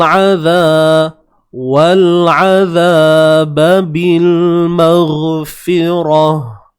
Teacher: Huruf ain sempitkan di bahagian tengah kerongkong kita.